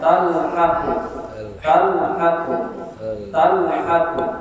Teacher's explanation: Semua lam mati yang terdapat di dalam fi'il sama ya adalah mati ya itu di dalam fi'il madhi atau fi'il mudhari atau fi'il amr, maka lam mati itu harus diizharkan, dinyatakan suaranya